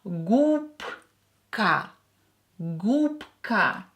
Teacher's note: Here B will be pronounced as P because it's near voiced K here.